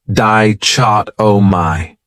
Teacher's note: This word has 4 syllables, and the stress is on that second syllable, dichotomy. That third syllable has that schwa